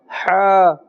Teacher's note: the makhraj of Ha comes from the center of the throat.